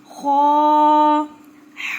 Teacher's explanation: یہ موٹا حرف ہے، جس جگہ پر آپ کی زبان ختم ہوتی ہے وہاں سے یہ لفظ ادا ہوگا اور ہونٹوں کو گول کر کے ادا ہوگا